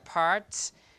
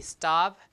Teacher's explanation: P here is aspirated but T is unaspirated after an S